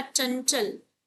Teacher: नासिक्य व्यंजन अनुस्वार की बिंदी है जिसका उच्चारण नाक से होता है